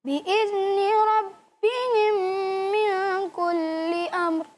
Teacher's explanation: ادغام شفوی، یعنی اس میم کو اس میم سے ملا کر ایک ہی آواز بنا کر اور غنہ کر کے پڑھیں گے